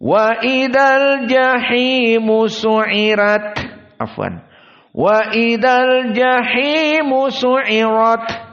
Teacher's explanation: tanpa ain musyaddadah. Dan tentunya ra-nya tidak ditarqiq, karena tarqiq ra khas qiraah Wars.